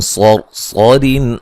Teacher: صاد کو موٹا ادا کریں گے، را کو بھی موٹا ادا کریں گے